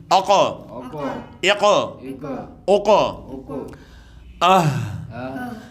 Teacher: قاف پھر حروف مستعلیہ میں سے آ گیا، حروف قلقلہ میں سے آ گیا، خوب جماع کے ساتھ یہاں پہ قلقلہ کرنا ہے ، یعنی اقا، اقا، اقا، دیکھیں ہا ہم نے پڑھا تھا